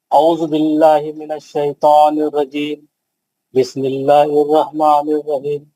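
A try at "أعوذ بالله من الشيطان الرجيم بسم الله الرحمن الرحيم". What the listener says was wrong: नहीं, सही नहीं है। खलखला नहीं करना, आवाज नहीं पलटाना, आवाज लंबी करके पढ़ना।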